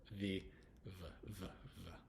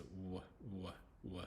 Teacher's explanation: w in English it doesn't make the V sound like in other language